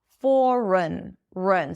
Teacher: So it's an R sound, a schwa, and an N.